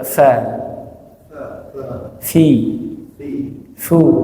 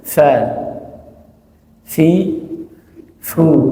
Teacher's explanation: Jadi perut bibir bawah bertemu dengan ujung gigi seri bagian atas.